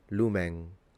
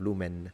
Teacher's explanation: the way ancient Romans would have pronounced this word would have been with a fully nasalized N at the end. Lumen, instead of lumen, if you can tell the difference.